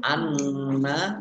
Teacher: Nun tasdid dibaca gunah atau mendengung ditahan dua harakat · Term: gunnah